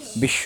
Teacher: তাহলে ব আলাদা করে উচ্চারিত হবে না, কিন্তু যার সঙ্গে যুক্ত হয়েছে ওটার উচ্চারণটা ডবল হবে। যেমন তালব্যস্য, তার নিচে দিলাম ব, কি হলো, বিশ্ব, বিশ ব হয়েছে, কিন্তু বিশ স, তালব্যস্যের উচ্চারণ কি হলো, ডবল হয়ে গেছে, বিশ্ব, দুইবার হয়ে গেল না?